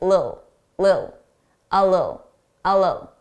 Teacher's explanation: notice there are those two T's in the middle a native speaker is just going to drop them